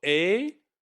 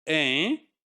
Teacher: that's the contrast between the two, oral vowel and then nasal vowel